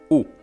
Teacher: balance we have a closed vowel in the front e and a closed vowel in the back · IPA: /u/